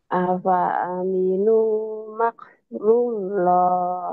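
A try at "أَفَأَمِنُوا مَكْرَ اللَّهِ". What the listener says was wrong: Bukan ru tapi ro Raullah ya. Ru baru. Afa aminu makrallah.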